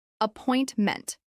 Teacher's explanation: This is pronounced with stress on the second syllable.